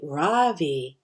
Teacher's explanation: people call me Ravi, with the stress on the first syllable